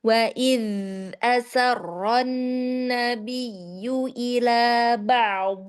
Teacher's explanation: Yadal yang sukun dia punya rakhawah ya. Jadi tetap dialirkan.